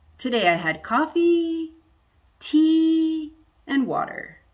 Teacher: I go up on the first two because I'm not done. I go down on the in because I'm done.